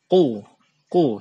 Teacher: pertama ini ada huruf qof oo ku ya coffee to di tempat keluarnya berada di bagian lidah paling belakang itu ditempelkan di langit-langit paling belakang juga